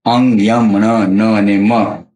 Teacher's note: અનુનાસિક કોને કહેવાય? વ્યંજન આપણે ઉચ્ચાર કરીને એ વખતે હવા મુખ અને નાસિકા માર્ગે બહાર નીકળે, બંને માર્ગેથી બહાર નીકળે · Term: અનુનાસિક વ્યંજન